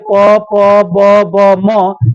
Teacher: ये ओट से उच्चारण होने वाले अक्षर हैं